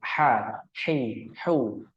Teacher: haruf ha itu makhraj nya terletak pada tenggorokan bagian tengah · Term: huruf ha